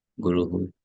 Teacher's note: Guru who but that her is very soft it's not her it is just H soft it's like a puff of air coming out of your mouth